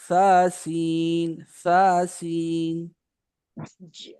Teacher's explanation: کوشش کریں سیٹی والی آواز نہ آئے اس میں.